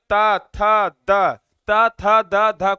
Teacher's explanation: जीभ जो दांत को टच कर रहा है मतलब दंत हो जाएगा उच्चारण स्थान।